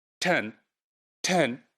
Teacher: you can feel the h addition to the t, which is aspiration, basically